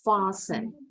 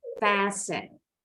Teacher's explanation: Boleh juga pengucapannya fasten. Kayak kebanyakan orang Inggris, mulutnya agak bulat. Fasten. Orang Amerika lebih lebar.